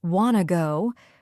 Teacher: They remove the T sound and make it short. So instead of want to go, it sounds like wanna go. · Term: reduce sounds